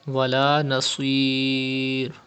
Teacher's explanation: Pronounce sod with thicker voice because it is from mustaliya letters, and you have to stretch madde aris at the end of this word.